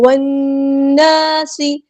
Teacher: واو کو ہم نے نون کے ساتھ ملا دینا ہے، والناس، نون پہ غنہ زمانی ہو رہا ہے، ایک الف کے برابر رکیں گے، 2 حرکات کے برابر رکیں گے · سین کی سٹی ہم واضح کریں گے · الف کے برابر رکیں گے، 2 حرکات کے برابر رکیں گے، واو کو نون کے ساتھ ملا دیں گے، حمزۃ الوصل ہمارا ڈراپ ہو جائے گا ، لام یہاں پہ لام شمسیہ، اس کو ہم ظاہر نہیں · لام یہاں پہ لام شمسیہ، اس کو ہم ظاہر نہیں کریں گے ، الف مد آیا ہے تو مد اصلی کریں گے، 2